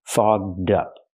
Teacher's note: We have to use the voiced gg- sound. Fog plus the voiced d sound. Fogged up. Link the sounds.